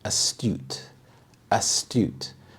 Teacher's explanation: The stress is on the second syllable, astute.